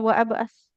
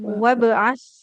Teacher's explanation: hamzah wasal namanya. Kalau di tengah enggak dibaca jadi bukan wa abas wabas langsung ke huruf bnya saja